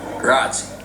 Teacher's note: Okay, so he's skipping the ending E completely.